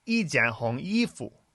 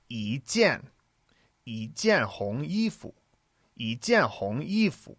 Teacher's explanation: when you have the character 一, when it comes before a fourth tone, it changes to a second tone